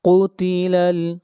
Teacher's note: قاف کو موٹا پڑھیں گے